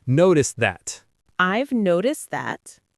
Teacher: The stress is on no in noticed. Notice how noticed that almost blends, and the T in noticed can sound a bit like a D in American English.